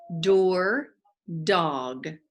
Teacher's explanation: it's a tongue tapper your tongue is behind your teeth put your hand on your throat kind of keep your teeth